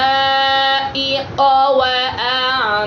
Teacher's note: মাদের হরফের উপর মোটা চিহ্ন বামে একই শব্দে হামজা হইলে, বামে একই শব্দে হামজা হইলে এখানে মাদ্দে মুত্তাসিল আসছে, এই জন্য 4 আলিফ টানা হবে।